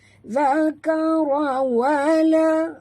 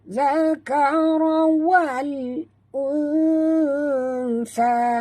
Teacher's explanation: Zakara wal alif lam qamariyah, bunyikan lam yang mati dengan jelas ya, jangan lantun, jangan baca zakara wala, tak mau baca wala ya.